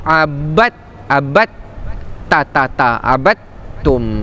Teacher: idgham mutajanisain iaitu dal dengan ta dia berkongsi makhraj. Da ta da dan ta tu berkongsi makhraj cuma sifat yang berbeza. · dal tu tak akan dibaca tetapi dia akan terus masuk huruf ta